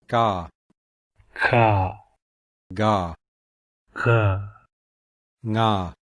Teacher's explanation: The gutturals are formed at the back of the mouth, and these are also called velars.